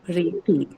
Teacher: So the O syllable, the second one is the one that is marked. That is the penultimate syllable for ITY.